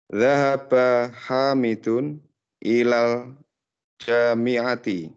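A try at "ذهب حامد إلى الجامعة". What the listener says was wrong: Masya Allah, mumtaz.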